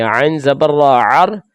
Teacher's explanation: جیسا کہ یہ دیکھ لیں، عین زبر را عر، یہ دیکھیں را ساکن ہے، را ساکن سے پہلے حرف پر زبر آ گئی، تو اس صورت میں ہم اس را کو پر پڑھیں گے